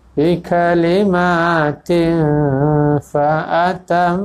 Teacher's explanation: hukumnya ikhfa hakiki baca dengan dengung ya sini dengung yang nipis ya